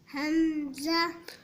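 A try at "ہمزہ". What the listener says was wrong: حمزہ، حمزہ، ہم نہیں ہے، ہاں نرمی والا ہے، حمزہ، حمزہ۔ آپ جھٹکا دے رہے ہو، ہم کر کے ہم نہیں پڑھیں گے، ہم، حمزہ۔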